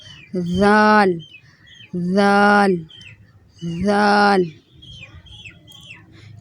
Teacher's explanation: اوپر والے جو دانت ہیں اس سے زبان کی نوک ٹچ کرے گی۔